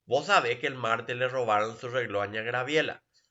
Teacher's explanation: So the S has been deleted. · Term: elision